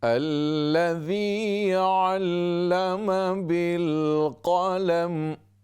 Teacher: यहाँ मद नहीं है, ज़्यादा लंबा न करें।